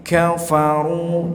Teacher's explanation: di sini ada 3 huruf kaf tapi tidak terdengar sifat hamesnya nih, ya masih banyak yang jahar padahal harusnya hames